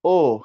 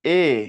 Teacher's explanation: সংবৃত মানে হচ্ছে কিছুটা গোলাকার হবে কিছুটা আর বিবৃত মানে হচ্ছে কিছুটা চ্যাপটা হয়ে যাবে